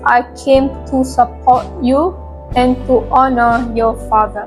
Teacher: The African English also retains R in support and honor showing strong roticity. The stress is on support, honor and father with a rising falling intonation pattern that expresses warmth and respect. · The African English also retains R in support and honor, showing strong rhoticity.